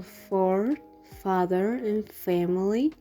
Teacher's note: when you pronounce it, the vocal cord does not vibrate, which is F.